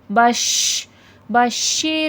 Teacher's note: شین میں تفشی پھیلاؤ کے ساتھ شین کی آواز آئے گی